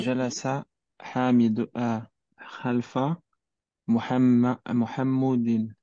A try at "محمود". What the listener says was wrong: non c'est pas Mohamoudin.